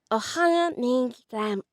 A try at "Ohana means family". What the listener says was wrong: Nasal, nasal, I think we're missing that nasal.